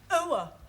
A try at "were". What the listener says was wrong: Almost. Try again, but this time, don't say ower, just were. Were.